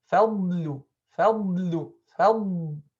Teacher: Rakhawa means to let the sound flow. So the sound of the dad should not be cut off as some reciters do.